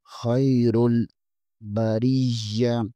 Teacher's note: یہاں پر یا کے اوپر شد ہے، یا کو تھوڑا سا دبا کر پڑھیں گے